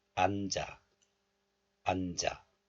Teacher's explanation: And this is also followed by a vowel here. So liaison or linking occurs. So the 지읒 moves to the next letter, and this 아 becomes 자.